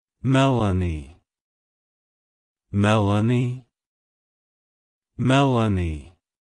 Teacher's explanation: emphasize the Mel syllable and then add a soft uh sound before ending with an a